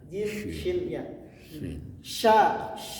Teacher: huruf syin tengah-tengah nah berada di mana Pak Tengah lidah